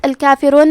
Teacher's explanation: کلمت الکافرون میں را پہ پیش ہے تو ہم حرف را کو موٹی آواز میں پڑھیں گے